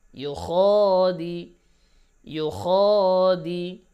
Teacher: দিতে কিন্তু টান হবে না, মানে কি ইউ খ দি ও দিতে টান যাতে না আসে।